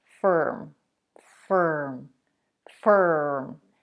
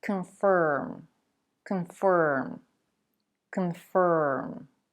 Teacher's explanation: The second syllable in confirm is also stressed, but it's pronounced with the stir sound.